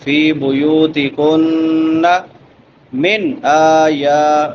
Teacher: من نون ساکن ہے، نون ساکن کے بعد حروف حلقی میں سے حمزہ ہے تو یہاں پہ اظہار ہوگا۔ من آیات اللہ، آیا دونوں کھڑی دبریں ہیں، ایک الف کے برابر لمبا کریں گے۔